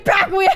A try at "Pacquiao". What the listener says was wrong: Pacquiao? It's like Pacquiao. It's like you're saying, I'm hurt in the middle of saying his name. Pacquiao.